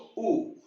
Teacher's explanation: तो हमारे होठ काम कर रहे हैं, तो ये किससे है? इसका उच्चारण होठों से है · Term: ओष्ठ्य